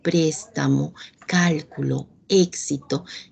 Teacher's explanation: en el caso de las palabras esdrújulas o pro paddock si todas estas palabras van a llevar la mayor fuerza de voz en la antepenúltima sílaba